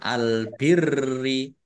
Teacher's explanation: Albiri alif lam qamariah ditandai lamnya dibaca sukun. Rnya dibaca dobel ada tasdidnya ditekan biar tampak dobelnya